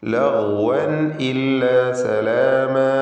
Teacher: ലഗ്വൻ ഇല്ല. തൻവീൻ ശേഷം ഹംസ ഇൽഹാർ ഹൽഖി മണിക്കാതെ വെളിവാക്കണം.